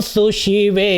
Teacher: सुशिवे पहले ये जो है दंत्य सकार है, उसके बाद फिर तालव्य शकार है।